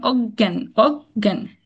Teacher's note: শব্দের মধ্যে বা শেষে যুক্ত বর্ণটি যদি থাকে তাহলে সেটা উচ্চারণ হবে একটু এরকম মানে গ ডাবল উচ্চারণ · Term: ডাবল একটা উচ্চারণ